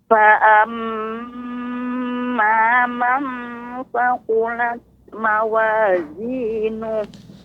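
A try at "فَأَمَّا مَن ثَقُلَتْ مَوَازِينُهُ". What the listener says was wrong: Ya Ibu, nun sukun bertemu dengan sa, ya itu ikhfa. Maka lebih ditampakkan ikhfanya. Ini termasuk jenis yang kedua, yaitu sempurna. Fa'amma man tha. tipis Ibu, nggak boleh tebal.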